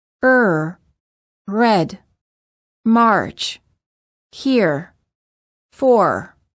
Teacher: In contrast, the American R is produced in the back of the mouth, and the tip of the tongue never touches anywhere inside the mouth